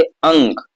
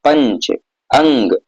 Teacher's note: पर अनुस्वार के उच्चारण में नाक से अधिक सांस निकलती है और मुख से कम, ठीक है। अब जैसे अंक, अब देखिए नाक से ज्यादा आपकी सांस निकल रही, अंश, ठीक है।